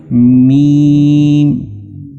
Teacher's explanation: मीम दोनों होठों के दरमियान से इसकी आवाज निकलती है।